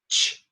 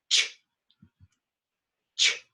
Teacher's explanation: It's t and sh together. Ch, ch, t, sh.